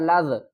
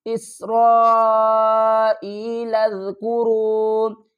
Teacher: آگے لام کو زال سے ملائیں گے نرمی کے ساتھ